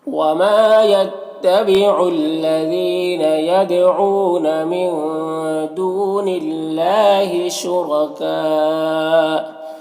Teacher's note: یہاں پر را کے اوپر زبر ہے تو را کو پر پڑھیں گے اور یہاں پر کاف میں مد ہے تو اگر یہاں پر وقف کریں گے تو مد لازم ہوگا اور اگر ملا کر پڑھیں گے تو مد متصل ہوگا، اور مد لازم مد متصل دونوں کو 3 سے 4 الف کے برابر کھینچ کر پڑھتے ہیں